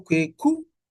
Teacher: So Kweku with a high tone at the end